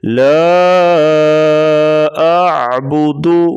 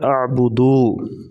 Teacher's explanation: پیش کو پڑھتے وقت واو مدہ کی آواز نہیں آنی چاہیے۔ لا اعبد، بعض لوگ پڑھ دیتے ہیں اعبدو، ایسا پڑھنا غلط ہے۔